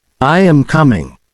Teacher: notice how the pitch of your voice Falls at the end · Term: intonation